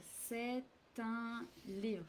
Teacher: So the T is actually pronounced together with the un.